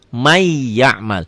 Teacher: Ya, tulisan dan bacaan beda. Ditulisnya man ya'mal, dibacanya di may, jadi double y ya. N-nya hilang. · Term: idgham bi gunnah